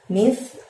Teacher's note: Lalu ada lafadz mithqala. Mith, ujung lidah kamu dorong ke gigi atas, jadi mithnya tipis